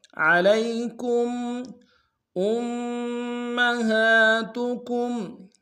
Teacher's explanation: حمزہ کو میم کے ساتھ ملانا، میم کے اوپر تشدید زور دیں گے۔